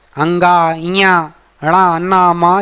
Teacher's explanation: इसका शुद्ध उच्चारण, क्योंकि ये अनुनासिक, नासिक के वर्ण है ना, अंगा, इया, णा, ना, मा, ये क्या है, नासिका से बोले जाते हैं